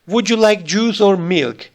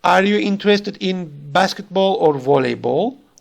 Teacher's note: The usual intonation is a rise on the first part, like juice and basketball, and the fall on the second part, like milk and volleyball